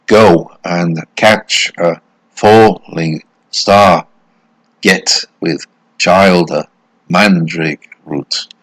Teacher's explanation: eight syllables aligned and it's the opposite of iambic it's trochaic it's a trochaic meter which means stress syllable followed by an unstressed